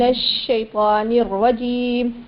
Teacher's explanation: نون کی زیر کی وجہ سے یہ را ساکنہ باریک پڑھی جائے گی، اور اس کے بعد جو اس کی اپنی حرکت خود ہے یعنی را زبر کے ساتھ وہ را موٹی پڑھی جائے گی۔